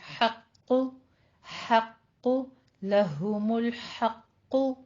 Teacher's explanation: حق میں حا باریک کر دیں گے، اور قوف کو آپ نے موٹا پڑھنا ہے، اوپر ضمہ ہے، ہونٹ گول کر لیجیے